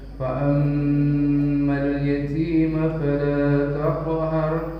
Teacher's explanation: mimnya ada tasdid situ, bahwa di sini adalah punya wajibul gunah, harus ditahan. Fa'ammal yatima fala taqhar, mimnya harus ditahan.